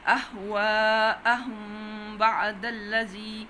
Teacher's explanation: اس میم کے آپ نے تھوڑی سی دیر لگانی ہے، پھر بعد آ کرنی ہے، دونوں حروف شفوی ہیں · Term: ادغام شفوی